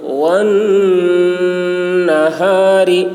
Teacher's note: نون مشدد غنہ ہوگا. والنہار ہا کی آواز بھاری ہوگی اور غ باریک.